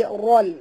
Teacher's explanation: dan ra ini kena baca tebal jangan baca ral bukan ral bunyi tapi rol ya eh, tebal kena baris atas ya eh.